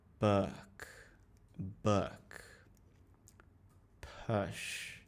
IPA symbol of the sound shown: ʊ